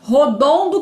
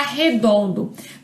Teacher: A primeira vogal posterior, né, o primeiro O, se modifica se tornando na vogal anterior, no caso aqui, na vogal E. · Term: dissimilação